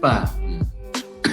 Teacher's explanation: Di sini ada pertama close dan konsonan. Ingat close ada voice plosive B, kemudian ada vokal A. Kemudian lanjut dengan vokalnya A panjang.